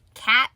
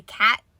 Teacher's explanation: you can tell that there's supposed to be a t there but like we also just don't pronounce it · I literally just watched a 2 to 3 minute video on how we don't pronounce the T's at the end of words. They end up being like D's or some like repressed T sound